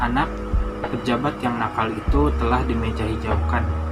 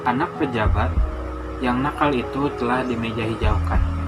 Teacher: perbedaan jeda yang agak lama antara anak dan pejabat pada kalimat pertama dan antara kata pejabat dan kata yang pada kalimat kedua